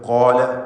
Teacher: ഖാഫിനും അലിഫിനും തഫ്ഖീം നൽകി തടിപ്പിച്ചുച്ചരിക്കുക.